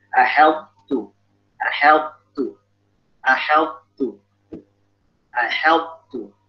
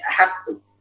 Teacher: Po-nya jelas, baik makhrajnya maupun sifatnya. Dia nggak ada idgham sama sekali.